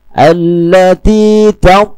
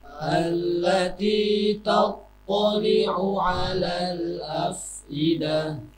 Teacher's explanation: Alladzi th karena Tha memang tidak mempunyai atribut hams, tetapi mempunyai atribut itbaq . Jadi Tha seharusnya tidak mengeluarkan desisan.